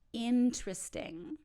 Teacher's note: we drop a whole syllable by taking out one vowel